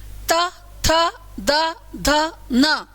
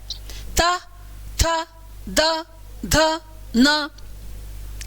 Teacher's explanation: आपकी जीभ कहां लग रही है दांतों को लग रही है और दांतों के पीछे हवा का प्रेशर है